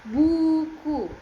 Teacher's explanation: U dilafalkan dengan lidah di posisi tinggi belakang dan bibir membulat